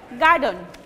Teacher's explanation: No, actually it will be pronouncing in the very quick way, garden. Stress will be on the first syllable, garden